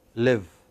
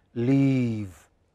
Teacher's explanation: some vowels are very short live and the others are very long leave your lips have to spread